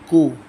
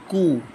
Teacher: We make the two lips a round shape, and in this way we produce the sound of pesh, ku, kaf, pesh, ku.